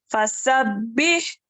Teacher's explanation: سین میں سیٹی کی آواز